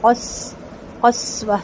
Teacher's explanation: سین کی سیٹی باریک ہوگی اور واضح ہوگی